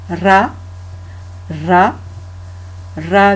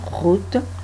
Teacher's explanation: Donc là, on fait rouler le R